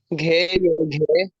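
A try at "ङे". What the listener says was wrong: ये नहीं है सर, ये नेजल वॉइस है, नाक से निकल रही है खालिसतन। यहाँ से निकल रही है आवाज, यहाँ से।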